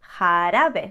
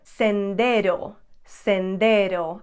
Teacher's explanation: The letter R makes a soft D kind of sound, similar to what a D would sound like in English, if it's in the middle of a word.